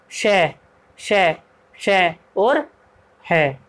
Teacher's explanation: ईषद विवृत, इसमें जो है हल्का सा मुंह खुलता है।